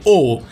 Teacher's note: এই ও কিন্তু গোলাকৃতি বা রাউন্ডেড স্বরধ্বনি